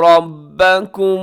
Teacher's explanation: با بھی باریک ہے، کاف بھی باریک ہے، میم بھی باریک ہے